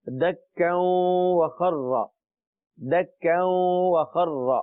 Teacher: واو مشدد ہے درمیان میں، دونوں کو ملایا